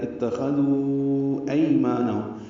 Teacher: خاء پر پڑھیں گے، ذال کو نرمی سے ادا کریں گے، ذو واو مد ہے اور اس کے بعد حمزہ آنے کی وجہ سے مد منفصل ہے